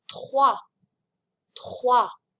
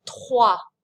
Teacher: I say the R in my throat and then the wa, and notice I don't pronounce the S. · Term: French R